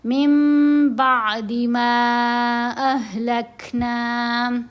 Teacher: نون ساکن یا تنوین کے بعد حرف با آ جائے تو نون کی آواز کو میم کی آواز میں بدل کر پڑھنا ہے اور اس کے اوپر غنہ بھی کرنا ہے، یہ اقلاب کہلاتا ہے۔